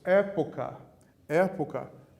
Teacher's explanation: Época, o E é a sílaba tônica, é a antepenúltima, a proparoxítona.